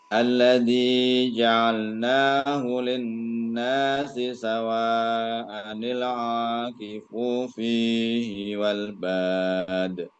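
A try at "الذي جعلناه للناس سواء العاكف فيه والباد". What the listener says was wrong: Sekali lagi, akifu, fu-nya pendek.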